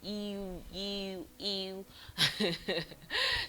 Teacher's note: it's a glide created by bringing the middle of the tongue very close to the roof of the mouth and then releasing it, bringing the middle of the tongue to the roof of the mouth and then releasing it instantly.